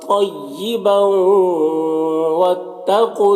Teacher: طیبا تو حروف مستعلیہ میں سے پر پڑھیں گے اور یہاں پر ملا کر جب پڑھیں گے تو ادغام ناقص ہوگا، تنوین واو سے مل کر غنہ کے ساتھ پڑے گا